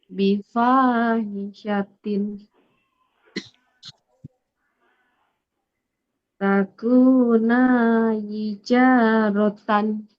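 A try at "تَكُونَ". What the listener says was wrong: Nah, ini Pak. Nah, yang ini nunnya pendek.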